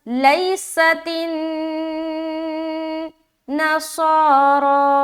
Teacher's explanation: صاد کے اوپر کھڑا زبر ہے، کھینچیں گے، صاد موٹا رہے گا، را کو بھی کھینچنا ہے، کھڑا زبر ہے، را بھی موٹا رہے گا۔ را کے اوپر بتایا تھا کہ زبر یا پیش آ جائے، اسی طریقے سے کھڑا زبر یا الٹا پیش آ جائے تو موٹا کرنا ہے، اگر زیر رہے یا دو زیر رہے یا کھڑی زیر رہے تو ہمیں باریک رکھنی ہے۔